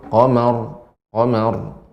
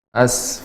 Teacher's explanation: ro ini dibaca dengan tebal namun sifatnya juga adalah sedikit mengalir